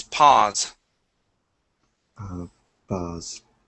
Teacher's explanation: with the Z okay so the voiced s